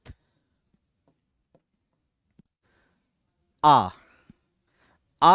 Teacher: तो विवृत आ जो है ये विवृत, इसमें मुख का सबसे ज्यादा विस्तार होता है। यही रीजन है कि कई बार जैसे हम लोग बच्चों को मुंह खोलने के लिए कहते हैं तो कहते हैं आ करो।